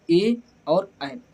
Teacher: कंठ तालव्य स्वर, जो कंठ और तालु दोनों से बोले जाते हैं